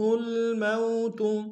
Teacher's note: میم واو لین ہے بغیر کھینچے پڑیں گے